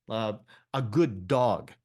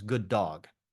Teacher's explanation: Sometimes, okay, a consonant-consonant sound creates a link, a good dog. So the first D drops off, becomes good dog, okay?